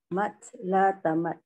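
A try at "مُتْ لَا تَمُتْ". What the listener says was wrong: Kenapa mat? Kan mata yamutu. Munya doma.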